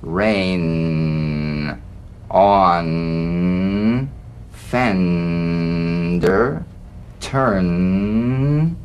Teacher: the N is a nasal consonant made with the the tongue blade to the upper gum Ridge it's most resonant and it's well forward placed it's a melodic